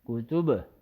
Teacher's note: حمزہ زبر ا، حا زبر ح اح، دال دو پیش دن احد کا وقفن احد کاف پیش کو تا پیش تو کتو با دو پیش بن کتبن وقفن کتب با میں کلکلا ہوگا. ایسا نہیں ہوگا کہ کتب نہیں کتب.